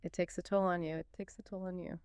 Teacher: Let's really focus on that linking, that merged sound between it and takes